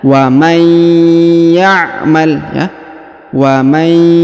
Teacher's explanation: Maka nun sukun melebur menghilang ke ya, ditahan dan ditekan 2 harokat. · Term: idgham bi gunnah